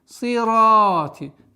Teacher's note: Долгота в размере двух огласовок фатха удлиняем на ра, твердое произношение